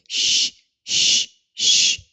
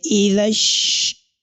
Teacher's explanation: the attribute of letter shin here is what is known as at-tafashi, that is to spread around